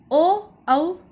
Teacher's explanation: ओ औ कंठ ओष्ठ से बोलता है क्योंकि ओ और औ अ और उ के उच्चारण से बना है। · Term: कंठोष्